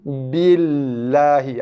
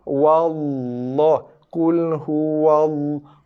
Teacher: lam dibaca dengan nipis, tarqiq, hujung lidah terpacakkan pada gusi.